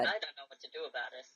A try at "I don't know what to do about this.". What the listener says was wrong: No, start over. You sound like Mr. Rogers. You sound like you're reading a lullaby. You're in Sparta.